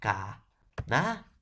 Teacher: Son vocales abiertas. Por lo tanto, se separan.